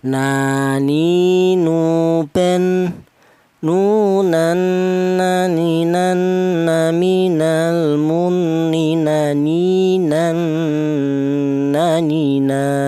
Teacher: Untuk huruf nun, keluarnya huruf berasal dari ujung lidah menyentuh ujung lidah menyentuh huruf nun ujung lidah menyentuh langit mulut